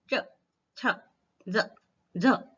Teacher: अंदर देखिए हमारी जिह्वा तालु से स्पर्श करती है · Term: च वर्ग